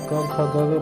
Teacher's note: जैसे कि हम क ख ग बोलते हैं तो हमारी आवाज़ जो आती है वो कंठ से लगभग निकल के आती है। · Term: कंठ उच्चारण